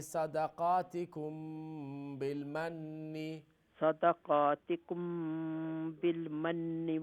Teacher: میم ساکن کے بعد با اخفا شفوی